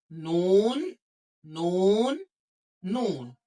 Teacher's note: نون بھی بالکل اسی جگہ سے نکلتا ہے جہاں سے لام نکلتا ہے، یعنی ہماری زبان کی نوک جو ہے وہ اوپر تالو میں لگے گی، اور زبان کے سائیڈ والے حصے اس کے قریب میں جو مسوڑے ہیں اس سے ٹچ ہوں گے، تب جا کر نون نون نون، حرف نون ادا ہوگا۔